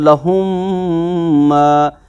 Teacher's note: तो इस कायदे को कहते हैं इदगाम शफवी, कि जब मीम साकिन के बाद दूसरा मीम आ जाए तो पहले मीम की जो साउंड होती है वो दूसरे मीम के साउंड में दाखिल कर देते हैं